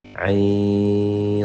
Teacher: اور عین کے لاسٹ میں جو نون آ رہا ہے نا، عین جب ہم عین پڑھتے ہیں تو لاسٹ میں نون آتا ہے، عین، تو نون کو جب آپ صاد کے ساتھ ملائیں گے تو یہاں پہ آپ نے غنہ کرنا ہے، اس کو ہم اخفا کہتے ہیں۔ عین، یہ ناک سے آواز نکلنی چاہیے جو کہ ایک الف کے برابر ہو